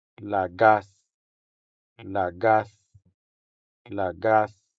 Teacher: The stress falls on the second syllable, making the second A sound longer than the first A.